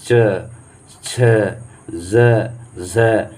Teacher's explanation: स्पर्श संघर्षी व्यंजन जो है च छ ज झ है, ये आपका जो है स्पर्श संघर्षी व्यंजन है, क्योंकि यह जो आवाज़ निकलती है इसका तो स्पर्श और संघर्ष दोनों करके निकलती है। मतलब जैसे च देखिए, जैसे सट करके निकलती है, दो मतलब हमारा नीचे का मुंह का ओठ और ऊपर नीचे का जो अंग है मुंह का, वो दोनों सटा करके और फिर संघर्ष करके निकलते हैं, च छ ज झ।